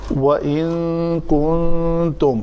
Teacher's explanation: نون ساکن کے بعد حرف کاف ہے، یہاں پہ اخفا ہوگا